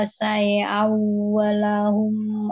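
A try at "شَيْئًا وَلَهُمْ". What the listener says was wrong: Syai'awwa pakai i, jangan syai, jangan nanggung kasrohnya. Syai'aw. Jadi lin itu bunyinya i ya, jelas. Jangan jangan sepotong apa istilahnya ya. Bukan ikhtilas. Dia tuh jadi agak ke e kalau nggak bunyinya i sempurna tuh. Jadi syai au jadi e syai au harusnya syai i jelas ya.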